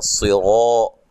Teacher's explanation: صاد کو موٹا, را کو موٹا, الف مدہ ہے